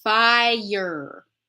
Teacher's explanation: to mention something today that people don't realize because of spelling in our accent Pacific Northwest Canadian or American English the word fire is two syllables it looks like one syllable because of the spelling right fire